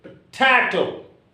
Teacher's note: As it is a trisyllabic word, your accent should be on the middle syllable.